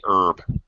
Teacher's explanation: The initial H, as it says here, is normally pronounced outside America, and but not by Americans. Americans say herb, silent H.